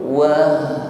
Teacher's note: huruf ha sukun di sini kita alirkan suaranya, wah, sampaikan pada tenggorokan bawah, lalu rokhawah, bunyi hurufnya kita alirkan, wah, bukan wahjur, bukan wah, nah, kita alirkan bunyi hurufnya, rokhawah namanya.